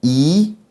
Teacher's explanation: Sílaba tônica antepenúltima, então a palavra proparoxítona.